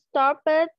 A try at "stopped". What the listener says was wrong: Nhưng mà stop, mình không đọc là stop it nhá. Mình sẽ đọc là stop.